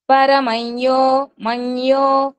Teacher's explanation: ముక్కుతో పలుకుతూ య కి య వత్తు ఇచ్చినట్లుగా వస్తుందన్నమాట · యా ముందు వచ్చిన అనుసరం కాబట్టి దాన్ని యా కింద పలకాలి, యాకి కొమ్ము ఇచ్చినట్లుగా. పరమయ్యో అప్పుడు ఎలా అవుతుందంటే కొంచెం ముక్కుతో పలకాలి, ముక్కుతో పలుకుతూ యాకి యావత్ ఇచ్చినట్లుగా వస్తుంది అనమాట. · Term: అనుస్వరం